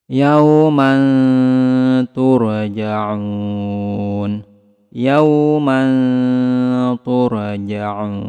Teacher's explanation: Kemudian di sini ada tanwin bertemu dengan huruf ta, maka samarkan tanwinnya, kemudian tahan, kemudian lidah kita bersiap-siap ke huruf ta.